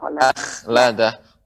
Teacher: huruf kha ketika dia sukun ya tidak dibaca dengan tebal. Tapi biasa.